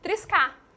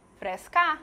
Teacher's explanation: a gente não costuma pronunciar na nossa fala o R final do verbo no infinitivo